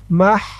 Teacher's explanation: মিম হা জবর মাহ, মাহ। হার উচ্চারণটা গলার ভিতর থেকে চিকুন হয়ে বের হবে